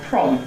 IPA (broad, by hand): prɒm